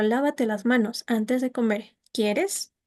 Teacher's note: sube el tono de voz, baja, se mantiene un poco, vuelve a bajar y en la parte quieres se vuelve a subir, se mantiene un poco y vuelve a nuevo. · Y cuando se aporta a esta oración exhortativa un tono, una parte de pregunta, como por ejemplo, lávate las manos antes de comer, ¿quieres? Sube el tono de voz, baja, se mantiene un poco, vuelve a bajar.